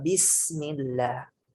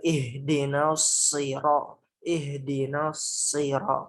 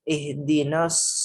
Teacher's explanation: Nah, desisan itu, tajamnya suara itu, nyaringnya suara itu ialah sifat sofir yang harus kita berikan di sini ke huruf sod, sin, dan juga zai.